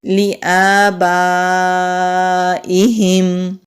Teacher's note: لام کے نیچے زیر جلدی پڑھیں گے، حمزہ کے اوپر کھڑی زبر ہے، ایک الف کے برابر کھینچ کر پڑھیں گے۔ با کے اوپر زبر ہے، آگے مد ہے، اس کو بڑی مد بھی کہتے ہیں، یہ مد متصل ہے۔